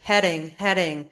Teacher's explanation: So you quickly tap the tip of your tongue against the gum ridge. The gum ridge is directly behind your upper teeth. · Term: flap D